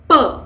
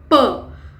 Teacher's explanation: ऊपर उठकर ऊपर की ओट को स्पर्श करता है it touches the lower lip is touching the upper lip and causing an obstruction for the air to flow freely